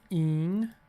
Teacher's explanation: we have a nasal vowel with a nasal consonant after it.